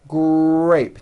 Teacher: the R sound is the strongest sound of the blend, and your lips often come forward before you even say the word. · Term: R blends